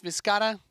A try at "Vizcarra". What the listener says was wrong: You were rolling your R's better in the...